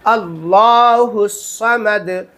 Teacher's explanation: اللہ کے لام کو پر کرنا ہے